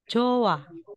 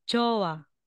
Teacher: E kung nakikita natin na if the final consonant ends with letter H, si H po ay ida-drop natin. Hindi natin babasahin.